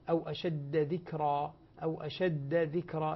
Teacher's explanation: الدال مشددة فلا تدغم بالذال التي بعدها